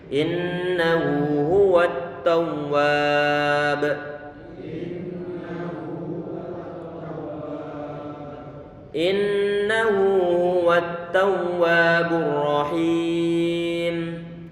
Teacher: Ini huruf ra dia tebal karena dia dalam kondisi fathah, kemudian him ada ya sukun, sebelumnya kasroh, dia bacaan matobi'i kalau kita wasalkan.